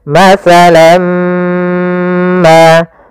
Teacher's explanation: Maka masalam ma, ya, kita namakan dengan idgham bi gunnah pula. Ya, kemudian caranya adalah kita tahan dulu mimnya. · tanwinnya masuk kepada huruf mim, tinggallah bunyi suara huruf min. Maka masalam ma, ya, kita namakan dengan idgham bi gunnah pula.